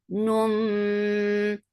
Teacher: The for kasra, the sound is short. Num iqlab, you are changing the sound of noon into meme. Bay, and there will be gunna.